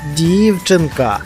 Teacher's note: правильно наголошений перший склад